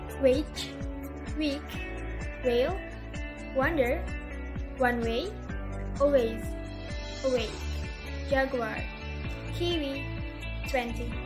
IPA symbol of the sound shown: w